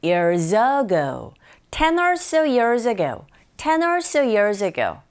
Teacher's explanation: years의 z 자음이죠. ago의 a 모음입니다. consonant, vowel이 만나면 there's a liaison, 연음 현상이 일어나거든요. years ago가 아니라 years ago, 10 or so years ago, 10 or so years ago 하시면 돼요.